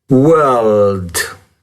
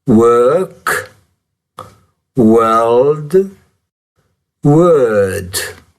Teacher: la L è molto sonora, molto più sonora che in italiano